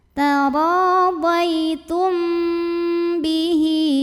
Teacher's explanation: ada ikhfa syafawi karena ada mim sukun yang menghadapi huruf ba, maka mim sukun kita bunyikan dengung, tahan.